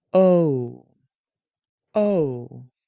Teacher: Begin with oh and move your mouth to ooh. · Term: Long oh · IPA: /ou/